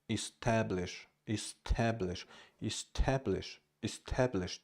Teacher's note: The first syllable E is unstressed.